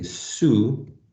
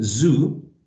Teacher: So the difference between s and z is basically voicing, right? They have the same place of articulation, which means that they are articulated by raising the tongue, right?